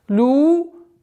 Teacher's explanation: долгота в размере двух огласовок даммы